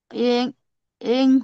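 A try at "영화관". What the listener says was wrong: यंग नहीं है जी, योंग है, योंग यो है, यो इसको यो बोलते हैं, ठीक है। तो ये हो गया यो योंग हुआ ग्वानी, पूरा पूरा पढ़िए, योंग हुआ ग्वानी।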